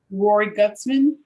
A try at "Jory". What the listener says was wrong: Jory with a J.